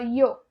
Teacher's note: E esse yo com o som do i, igual a gente fala no português, é bem parecido